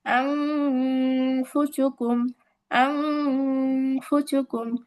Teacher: এই যে আন না পড়ে আং, আং বলে নাকের ভিতরে লুকায়া গুন্না করলাম, এটাই হচ্ছে ইকফা গুন্না।